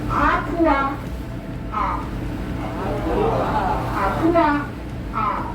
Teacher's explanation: An apostrophe in Hawaiian language is called an okina, and that means you have to make a pause. It's called a glottal stop. So just make a pause.